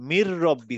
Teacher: এই নুনটা বাদ হয়ে যাবে, বাদ হয়ে গিয়ে মি থেকে র এর উপরে চলে যাবে, এবং এই আচ্ছা, মিন এই এবং র এই দুটো একসাথে হয়ে যাবে, মির রব্বি হয়ে যাবে। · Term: ইদগাম